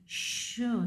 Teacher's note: हाँ जी, श साउंड, ये वॉइसलेस है, पैलेटो एलोवेलर है, हार्ड पैलेट और टीथ रिच का इस्तेमाल हो रहा है इसमें।